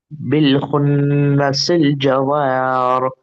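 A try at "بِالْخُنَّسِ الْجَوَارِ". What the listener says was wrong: जवारी, रा पे जेर है ना। जवारी, वाह बारीक है ना, जवारी, री।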